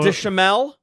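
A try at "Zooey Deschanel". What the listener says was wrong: Zoe Deschanel. There's an N.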